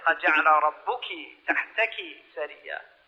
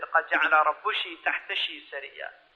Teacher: There's an Arab tribe in the eastern province that says sh. They make a sh sound for the feminine. So instead of saying قَدْ جَعَلَ رَبُّكِ تَحْتَكِ سَرِيًّا, they said قَدْ جَعَلَ رَبُّشِ تَحْتَشِ سَرِيًّا.